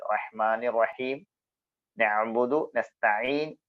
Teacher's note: രണ്ടും വരുന്നത് തൊണ്ടയുടെ മധ്യഭാഗത്തുനിന്നാണ് ഐനും ഹാവും ഹാ പറയുമ്പോൾ കാറ്റ് പുറത്തേക്ക് വരും ഐൻ പറയുമ്പോൾ കാറ്റ് പുറത്തേക്ക് വരില്ല ഇയാക്കബുദുവ